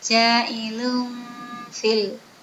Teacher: nun mati ada dan tanwin apabila bertemu dengan fa, maka dibaca samar-samar. Disebut bacaan ikhfa.